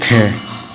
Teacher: ख जो है स्पर्श व्यंजन भी है और कंठ ध्वनि भी है और अघोष व्यंजन भी है और महाप्राण भी है।